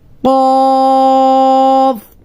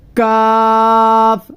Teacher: قاف میں ہم نے زبان کو اوپر اٹھا کے قاف کو موٹا کیا تھا، اور کاف میں ہم نے اس کو باریک کرنا ہے. زبان کی جو ہماری جڑ ہے، زبان کی جڑ جب اوپر جو نرم تالو ہے، نرم تالو کے ساتھ لگے گی تو قاف ادا ہوگا.